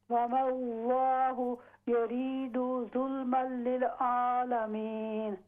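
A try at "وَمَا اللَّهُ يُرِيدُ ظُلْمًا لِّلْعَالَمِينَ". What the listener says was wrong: आइन पर कोशिश करें, आइन अपना दुरुस्त करें। आपके आइन की अदायगी जैसे हमज़ा की अदायगी होती है उस तरह लगता है, तो आइन पे कोशिश करें।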